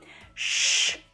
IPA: ʃ